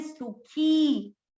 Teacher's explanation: ख पर ई की मात्रा बड़ी तो इसको लंबा खींचे